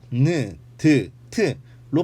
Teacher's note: 우리가 니은, 디귿, 티읕 셋 다 느, 드, 트로 발음해보면 발음할 때의 조음 위치는 같은 것을 볼 수 있죠. 그렇지만 니은일 때보다 디귿이 더 세고 디귿일 때보다 티읕이 발음이 더 센 것을 알 수 있습니다